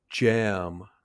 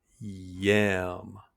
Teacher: Did you notice that with jam, your tongue touches the top of your mouth, but with yam, it does not?